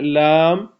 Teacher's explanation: زبان استعمال ہوتا ہے اس میں، اور دانت استعمال نہیں ہوتے اس میں، دانتوں کے اوپر جو مسوڑے ہیں وہ استعمال ہوتے ہیں